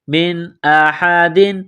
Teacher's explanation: نون ساکن کے بعد حمزہ ہے، حروف حلقی ہے تو نون ساکن پر غنہ نہیں کریں گے